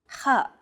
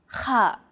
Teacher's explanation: The letter kha is a sound that's often used in Arabic between AK and NH sound. Kha, It sounds as though you're clearing your throat.